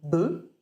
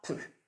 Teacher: un trait phonétique ou articulatoire, comme par exemple le voisement qui fait passer de be à peu